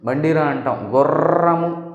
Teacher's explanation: గుర్రము దంత మూలాన్ని నాలుక ప్రకంపనలు చేయడం వల్ల పుడుతుంది కంపనాలు చేయడం వల్ల పుడుతుంది కాబట్టి దీనిని కంపితం అన్నాం దీన్ని తాడితం అన్నాం